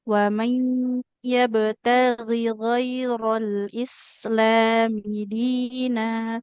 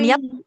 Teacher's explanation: Ada huruf ba sukunnya harus dipantulkan.